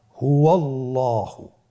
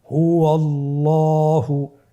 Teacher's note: আল্লাহ শব্দের আগেই, মানে আল্লাহ শব্দের দ্বিতীয় লামের আগেই আপনার জবর এসেছে, তাহলে আল্লাহ শব্দের দ্বিতীয় লামটিকে পোর করে পড়তে হবে।